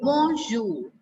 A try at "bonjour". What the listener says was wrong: No, not zour. It's bonjour. Jour.